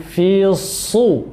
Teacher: Kemudian alladzi yuwaswisu fi sudurin nas, alladzi yuwaswisu, sinnya dibaca tipis, kemudian fi su, ya, shad berharokat dhammah, ini kita tebalkan agar tidak mirip dengan huruf sin ketika berharokat dhammah